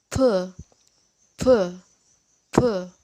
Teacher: Seperti ada letupan p. Jadi tidak ada getarannya teman-teman. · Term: unvoiced